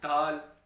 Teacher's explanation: دال میں تو یہ دونوں دانتوں کے درمیان, اوپر نیچے دانتوں کے درمیان زبان کو دبانا ہوتا ہے